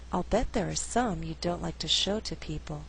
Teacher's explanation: Here I did not stress the verb like, although like is a content word. The flow is a little more natural without stressing all those content words in the second half of the sentence.